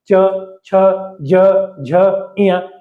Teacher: है लेकिन च का उच्चारण नहीं करना है ऐसी स्थिति में च उच्चारण करने से जस्ट पहले आपके तालू जो है आपका जो जीव है वो तालू से जाकर चिपक जाता है